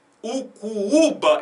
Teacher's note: Ucuúba, então tem 2 U's, o segundo é mais forte.